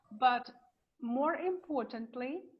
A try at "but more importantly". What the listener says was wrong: this is not se, it's te.